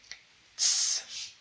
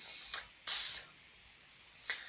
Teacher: Ahora bien, sigue TS, tss, como si dijéramos S o como hace la viborita, pero metemos repentinamente la T